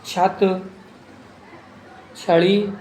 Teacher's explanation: छ तालव्य वर्ण है